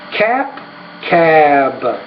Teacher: when the B's at the end of the word because it's a voice consonant the vowel which precedes it should be longer and the P is a voiceless consonant which means the vowel